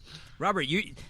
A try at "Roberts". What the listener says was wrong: first of all, my name's Roberts and not Robert. I get a lot of Robert.